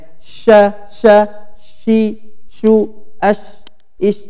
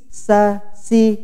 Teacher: sifat huruf at-tafasyi ya, yaitu angin menyebar di mulut. Ini khusus pada huruf shin ya.